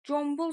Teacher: Gombul sözü N ilə yazılır. Tələffüzdə M-ya çevrilir.